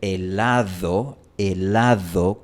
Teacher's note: Puede ser helado, helado con un sonido bastante fuerte, fricativo, prácticamente igual a la TH de they, them en inglés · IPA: [ð]